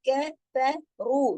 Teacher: را موٹا پڑھا جا رہا ہے، باقی تمام حروف باریک پڑھے جا رہے ہیں۔ کفروا، اس طریقے سے، اور 2 حرکات رو کو کھینچیں گے واو مدہ کی وجہ سے۔